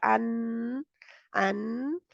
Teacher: थोड़ी-सी साइडों से है जगह लेकिन ज़ुबान में बंद कर दिया। अन और आवाज़ नाक के ज़रिए जारी रहती है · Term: नून